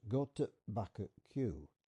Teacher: There's something catching the back of the throat there for the glottal stop.